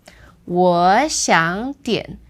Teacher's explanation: Now when these three words are put together and there are no phrases, the tone change rule is like this... That's the first two becomes second tone, and the third word stays the third tone. · the first two become second tone, and the third word stays the third tone.